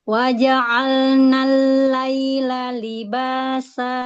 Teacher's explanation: Wa ja'alnal lail malam ya, huruf samsiyah langsung masuk ke lam. Lamnya tasydid.